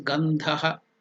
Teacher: So that Dha is Mahaprana. You are using more energy. So it is Gandhaha.